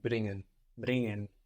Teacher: So you don't pronounce so much the g here because it's ng. It's an ng combination.